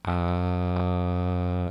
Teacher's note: Tenemos la letra A, es abierta, ¿sí? En la parte central se genera A y es un sonido medio. Y luego y fíjense ustedes, la letra A se hace con la boca abierta, completamente nuestra boca abierta.